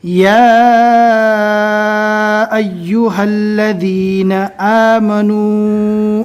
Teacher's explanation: یا اور آمنو ان دونوں جگہوں پر چھوٹی مد ہے، کم سے کم 2 الف اور زیادہ سے زیادہ 3 الف کے برابر کھینچ کر پڑھنا ہے